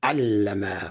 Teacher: This is allama with a shadda, a doubling of the L sound.